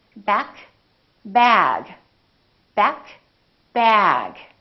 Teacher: the vowel that comes before the voiced sound is longer.